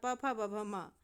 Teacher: इनका उच्चारण स्थान ओठ माना जाता है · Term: ओष्ठव